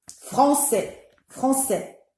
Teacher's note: En est long. La durée devient réduite à l'intérieur du mot.